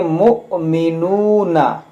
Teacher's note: ये हमज़ा साकिना है, तो इसमें झटका देकर पढ़ेंगे, इस वाव को यहाँ पर नहीं पढ़ेंगे, इसको पढ़ेंगे मुअमिनूना।